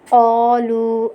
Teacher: قالوا پہ مد ہو رہی ہے، اسے ہم 4 الف کی مقدار کھینچ کے پڑھیں گے۔